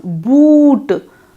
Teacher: You will find yourself raising the back of your tongue, boot. You will also find yourself pursuing or rounding your lips, boot.